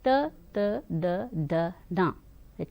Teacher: तवर्ग के जो अक्षर है दंत के ऊपरी हिस्से से स्पर्श करते हुए निकलते हैं, इसलिए इन्हें दंत कहा जाता है।